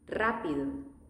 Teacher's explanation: R is in the beginning, so it's going to be a strong sound.